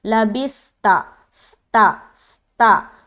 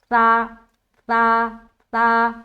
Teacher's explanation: تو سا جو ہے اس میں سیٹی نما آواز نہیں آنی چاہیے، اور یہ موٹا بھی نہیں ہونا چاہیے